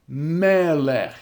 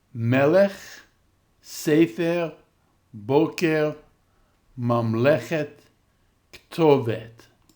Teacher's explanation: notice the accent is now on the syllable before the e.